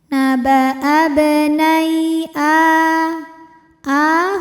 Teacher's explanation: A a hukumnya mad badal. Karena ada hamzah yang dipanjangkan maka hamzahnya ini panjangin dua harakat.